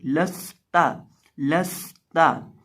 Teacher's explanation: यहाँ हम इसको लाम को बिना लंबा किए पढ़ेंगे, लंबा नहीं करेंगे, लंबा करने का कोई जवाब ही नहीं निकलता। और इसी तरह ता को भी बिना लंबा किए पढ़ेंगे और सीन के अंदर हम सिटी की आवाज़ पैदा करेंगे